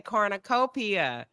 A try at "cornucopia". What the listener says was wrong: You almost had it. You just put an emphasis on the P. You said cornucopia, so you still were pronouncing it. You just put an emphasis on the wrong syllable.